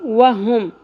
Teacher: ہا اقصی حلق سے ادا ہوگا